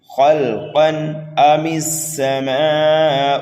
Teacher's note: تنوین کے بعد میں حمزہ آ رہا ہے، اس لیے یہاں پر اظہار ہوگا، اظہار حلقی · حمزہ کو جلدی پڑھنا ہے، میم کو سین میں ملانا ہے، دوسرے سین کو جلدی پڑھنا ہے، اور میم کے بعد میں الف مدہ آ رہا ہے، الف مدہ کے بعد حمزہ اسی کلمے میں ہے، یہاں پر مد متصل ہوگا۔